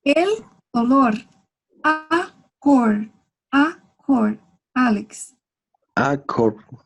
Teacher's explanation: La L, em final das palavras, em português, se pronuncia como se fuera U.